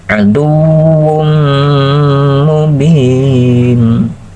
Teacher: nah itu pakai gunnah sahabatku, itu larikan ke hidung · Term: idgham ma'al gunnah